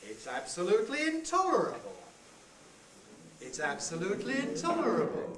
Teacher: take let's move on then to the next kind of head the rising head starts on a very low pitch and rises example on the handout it's absolutely intolerable it's absolutely intolerable try